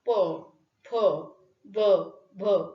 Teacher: ओष्ठ व्यंजन ओठांच्या साह्याने ज्यांचं उच्चारण केलं जातं ती ओष्ठ व्यंजन. प, फ, ब, भ ही ओष्ठ व्यंजन आहे.